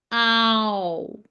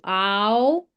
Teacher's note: your mouth position actually changes here. You start from ah and you go to o, ow.